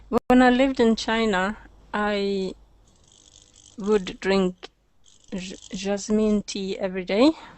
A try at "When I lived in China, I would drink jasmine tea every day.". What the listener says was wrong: Okay, I would drink. Nice.